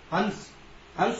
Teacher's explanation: आपकी नासिका मार्ग से ही वायु बाहर निकलेगी, जिसे हम अनुस्वार की श्रेणी में लेते हैं